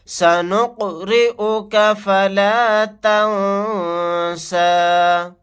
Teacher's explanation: یہاں پر قاف ساکن ہے، قلقلہ کر کے پڑھیں گے۔ را کے نیچے زیر ہے، را کو باریک پڑھیں گے۔ نون ساکن کے بعد سین آ گیا، یہاں پر اخفاء کا قاعدہ ہوگا۔